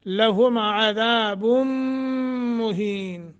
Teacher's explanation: نون تنوین کے بعد میم مشدد ہے غنہ کریں گے